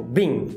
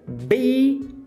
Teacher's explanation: Você começa com aquele ei longo e aí depois você dá uma reduzida e dá uma relaxada.